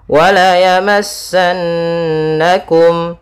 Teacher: ada nun bertasydid, bacaan gunnah, ditahan dulu suara n-nya